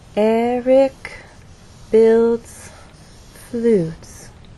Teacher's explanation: Stress is on the first syllable, builds as one syllable, and flutes receives our main stress. · So there is still a change of pitch because there is word stress, but the overall pattern is falling intonation.